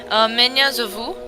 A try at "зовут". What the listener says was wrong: Not this silent.